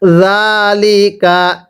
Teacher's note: জালগুলো উচ্চারণ করার সময় জিবার আগাটাকে দাঁতের আগার সাথে লাগিয়ে নরম করে পড়বেন।